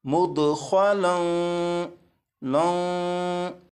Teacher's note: लाम पर मैंने गुन्ना भी किया और गुन्ना इस तरह किया कि ज़बान को तालू से हटाकर गुन्ना किया